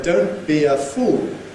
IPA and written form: ˌdəʊnt bi ə ˈfuːl (don't be a fool)